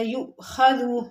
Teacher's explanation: حمزہ ساکن ہے یو، تو یہاں پر ہم نے ہلکا سا جھٹکا دینا